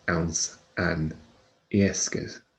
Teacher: FH is silent, so we say that ans and yesker, as if it starts with the E rather than the FH. The FH drops.